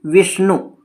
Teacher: वी पे धक्का लग रहा है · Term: बलाघात